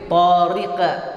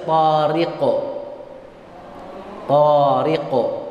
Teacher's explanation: Dia ada qaf di situ yang mati. Qaf sifatnya tebal, maka ketika dia mantul sifatnya juga harus tetap tebal. Tidak boleh tariqa, tapi harus tariqo.